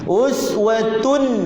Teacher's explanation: tak boleh kita dengungkan, tak boleh kita qalqalahkan, hanya kita izharkan, jelaskan bunyi nun yang ada pada tanwin. Uswatun gitu itu namanya kita jelaskan bunyi nun itu yang ada pada tanwin itu.